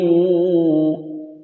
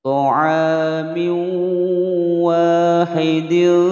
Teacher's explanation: Hukum bacaan idgham bi gunnah dimasukkan dan didengungkan.